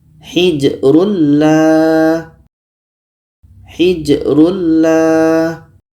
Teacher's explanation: Jadi bunyi tanwin ini kita masukkan ke la. Masuknya tanwin kepada la itu sudah sempurna karena bunyi tanwin tidak terdengar lagi. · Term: idgham bila ghunah, idgham bila gunnah